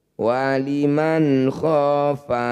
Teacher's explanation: nun sukun bertemu ko disebut bacaan izhar halq bunyi Nun baca jelas tidak usah dengung